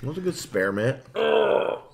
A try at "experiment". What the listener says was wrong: Don't say the T hard. Experiment.